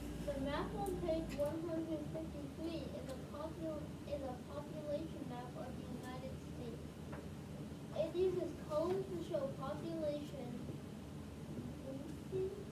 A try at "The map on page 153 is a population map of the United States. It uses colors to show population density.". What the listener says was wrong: Confidence. Say it with confidence, though. Not like a question. No, you said it right the first time. You said density. There you go, but say it with confidence, so no question.